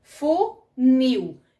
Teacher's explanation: A gente percebe mais o nil do que o fu. Então, a palavra aqui é oxítona.